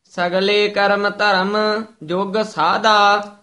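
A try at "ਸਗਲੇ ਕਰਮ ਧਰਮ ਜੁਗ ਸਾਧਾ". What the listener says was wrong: नहीं, साधा साधा कस के उच्चारण करना है। सगले कर्म धर्म जुग साधा।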